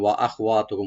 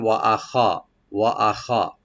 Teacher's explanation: ওয়া ওপেন রাখবেন, আখাওয়া হামজাকে ওপেন করে, হার উপরে যে জবরটা আছে একটু একটু রাইট দিবেন, কারণ অনেক সময় এটা সাকিন হয়ে যায়, পড়ার সময় ওয়া আখওয়াতুকুম হয়ে যায়।